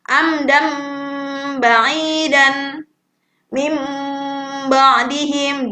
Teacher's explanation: diganti menjadi huruf bunyinya mim ya teman-teman, nunnya diganti mim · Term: iqlab